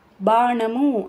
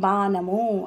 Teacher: నా అంటే నాలుక పైనకి, నా అంటే పంటి వెనకాల తగులుతుంది నాలుక. అలాగే లా పైన, లా పంటి వెనకాల.